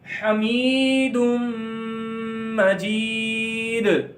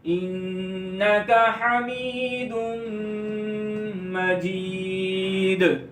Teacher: میم کو لمبا کرنا ہے، جیم کو لمبا کرنا ہے اور دال پر قلقلہ کرنا ہے